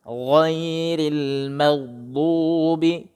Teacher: Ghairil, rilnya, ronya itu tipiskan lagi